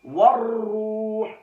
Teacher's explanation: را پر پیش ہے، را مشدد بھی ہے سختی سے اور پیش کی وجہ سے را کو موٹا بھی کریں گے